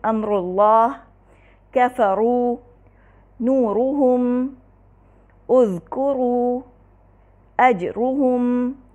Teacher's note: پہلی صورت یہ ہے کہ را پر ضمہ ہو، پہلی صورت یہ ہے کہ را پر ضمہ ہو، جس کی مثال دیکھیے، امر اللہ، کفروا، نورہم، اذکروا، اجرہم، ان تمام صورتوں میں را پر ضمہ ہے، لہٰذا را کو ہمیشہ مفخم پڑھا جائے گا۔